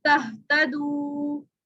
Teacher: तो वाव मद्दा को 3 से 5 अलिफ के बराबर खींचा जाएगा